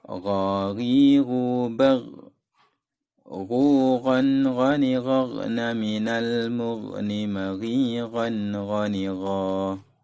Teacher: Makhraj huruf gha adalah tenggorokan bagian atas, seperti yang ada di gambar. · Kha dengan ghain adalah sama tempat keluarnya, yaitu tenggorokan bagian paling ujung. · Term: huruf ghain